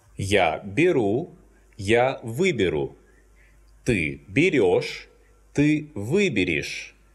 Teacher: when the stress falls on the prefix вы, these endings become unstressed, and the letter ё must be replaced with the letter е.